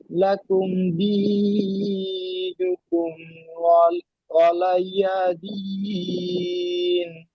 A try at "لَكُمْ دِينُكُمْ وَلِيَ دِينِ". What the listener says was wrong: লাকুম দীনুকুম, ওয়ালাই হবে না, ওয়ালি। ওয়ালি ইয়া সাবার ইয়া, ওয়ালিয়া দিন। ওয়ালি লামটা একটু টান হয়ে যাচ্ছে, টান হবে না।